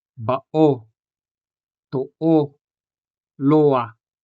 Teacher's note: The stress in these examples, bao, to-o, and loa, falls on the lone syllables, o in bao, also o in to-o, and a in loa.